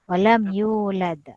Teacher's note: sebab kita berhenti, maka dia kalkula kubra